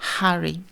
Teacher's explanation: les plis vocaux sont bien écartés et l'air sort des poumons, passe par la glotte et et se frotte un petit peu aux différents articulateurs, mais sans être vraiment freiné et arrêté. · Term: expiration